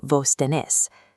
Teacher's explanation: Adopting it strikes out the middle vowels found in standard Mexican Spanish, morphing tú tienes into vos tenés.